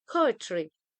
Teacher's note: in the word poetry, the first syllable po is stressed, while the second syllable it is unstressed.